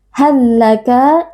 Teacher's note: Huruf pertamanya sukun dan juga huruf keduanya berharakat dibaca dengan idgham atau dengan memasukkan huruf pertama ke dalam huruf yang kedua. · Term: idgham mutamathilain